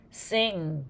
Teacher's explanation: you should feel a little vibration in your nose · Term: nose sounds